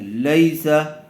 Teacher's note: لام یا زبر لئی، سین زبر سا، لیسا یا ساکن سے پہلے زبر آیا ہوا ہے، اسی لیے لین کا قاعدہ ہوگا، نرم آواز سے اور جلد ادا کریں گے۔